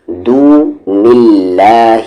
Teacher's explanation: نون ساکن کے بعد دال ہے، اخفا لیٹر ہے، دون اللہ، یہ اللہ کا لام لائٹ ہوگا کیونکہ اس سے پہلے زیر ہے